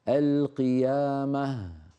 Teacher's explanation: ما بين الهاء لأنها في آخر الكلمة وهي أصلا حرف ضعيف، فإذا ما بيناها تخرج كأنها فتحة. القيامة، لا بدك تقول القيامة ما، فلا بد من بيان الهاء.